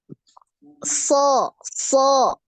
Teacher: selain pangkal lidahnya naik permukaan lidah naik juga ya